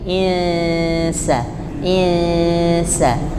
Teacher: bunyinya bukan ng bukan waqal in bukan ing tapi Insa Insa antara bunyi n dengan S jadi satu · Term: ikhfa huruf Sin